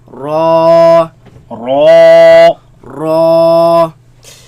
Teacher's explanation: Raise the back of the tongue. Make it heavy.